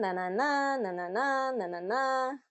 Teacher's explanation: There's kind of this up pitch or rising intonation that happens throughout the sentence. And what we need to do is we need to create that rhythm that's more, think of it as a hills across the valley, is that you go up the hill and down the hill and up the hill and down the hill.